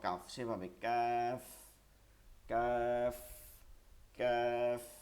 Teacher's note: জিব্বার গোড়া থেকে একটু আগে বাড়িয়ে তার বরাবর উপরের ওই বরাবর তালুতে লাগে যাবে